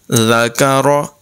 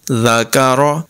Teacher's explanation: زبر ذا کاف زبر کا ذاک را زبر را ذاک را ذال بھی باریک کاف بھی باریک اور را کی اواز پر ہو گئی